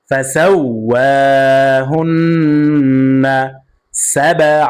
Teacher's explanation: সাবআ প্রতিধ্বনি আওয়াজ দিয়ে পড়তে হবে, ধাক্কা দিয়ে পড়তে হবে। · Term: কলকলা